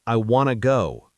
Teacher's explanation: The NT blends into N and the T disappears.